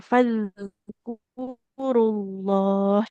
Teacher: Oke, yang ini jangan fadur huruf dal kan dia enggak masuk huruf qalqalah ya. Nah, huruf dal itu mengalir suaranya.